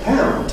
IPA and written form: pæʊnd (pound)